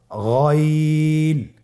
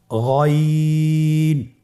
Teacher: গইন হরফটি উচ্চারিত হয় কণ্ঠনালীর শেষ ভাগ হতে।